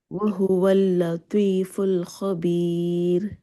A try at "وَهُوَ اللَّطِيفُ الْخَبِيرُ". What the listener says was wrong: جی ماشاءاللہ بہت اچھا پڑھا ہے